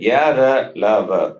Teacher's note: all the semi-vowels, they are non-aspirate, alpaprana